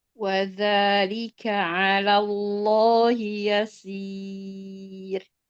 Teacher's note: Lam yang pertama ditipiskan ala alallah yang tebal lafzul jalalahnya aja.